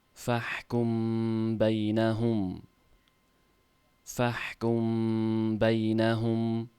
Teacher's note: Mim tovishi labda yashirib o'qiladi. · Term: ixfo shafavi